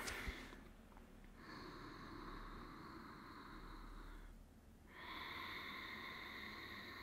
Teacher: Donc, comme si vous aviez fermé un petit peu le passage et ça permet de contrôler plus l'entrée et l'expire pour pouvoir contrôler le flux et allonger la respiration. Donc, il y a comme un frottement d'air au fond de la gorge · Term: respiration Ujjayi